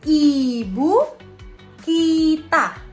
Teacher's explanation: Selanjutnya setelah vokal A ada vokal I. I tinggi atas depan dengan kondisi bibir tertutup.